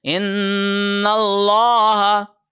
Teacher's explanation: ان اللہ، نون کے اوپر ہم نے غنہ کیا تشدید کی وجہ سے، پھر لام کو، اللہ کے لام کو موٹا پڑھا